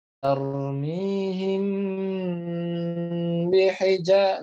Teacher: Mim sukun ketemu dengan ba itu wajib digunnah. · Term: ikhfa syafawi